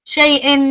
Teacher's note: You have the lean on the ya, and then the hamza